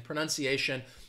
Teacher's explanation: that ti gets blended together and you get the sh sound